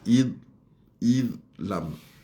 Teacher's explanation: Dal dengan fa'id fa'id lam zal kita duduk, ujung lidah kita duduk di gigi atas